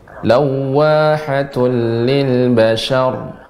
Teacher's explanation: Lil syanya tetap tipis, ya ra-nya yang tebal.